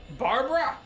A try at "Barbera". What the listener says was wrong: Barbera. You're putting the emphasis on the wrong syllable.